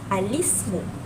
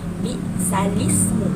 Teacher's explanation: Okey, seperti kita tahu dalam gambar tersebut, alif lam ni sepatutnya kan lam itu dibaca al, tetapi lam tu ditukarkan baris bawah sebab alif itu tidak boleh dibaca i. Jadi dia berbunyi alismu dan dia berbunyi sekali lagi alismu. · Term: naqal